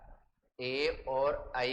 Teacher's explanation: ए और ऐ का उच्चारण स्थान कंठ और तालु है।